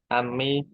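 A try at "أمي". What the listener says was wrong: Kalau Pak Alif itu bukan Ami kalau Ami itu pakai Ain kalau pakai Alif itu apa umi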